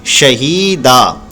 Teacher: यहाँ पर देखिए ज़ेर के बाद या आ रहा है तो इसलिए इसको खींचेंगे शहीदा। और याद रखें जो दो ज़बर है जब इस पर वक्फ़ करते हैं यानी रुकते हैं, हम यहाँ पर रुक रहे हैं, ये देखिए तो की आयत आ गई तो इसलिए हम यहाँ पर रुकेंगे।